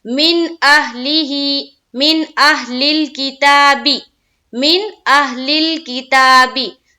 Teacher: نون ساکن ہے اور اس کے بعد حمزہ، یہاں پر اظہار کا قاعدہ، نون کی آواز کو صرف اور صرف ظاہر کرنا ہے، یہاں پر دیر نہیں لگانا ہے، صرف نون کی آواز کو ظاہر کرتے ہوئے پڑھ کر نکل جانا ہے۔